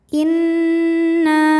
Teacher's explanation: nunnya dihukumi ghunnah musyaddadah karena nun bertasydid, cara bacanya dengung. Inna, na mad thobi'i dzohiri karena ada alif didahului fathah, maka nun panjang dua harokat. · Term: gunnah musyaddadah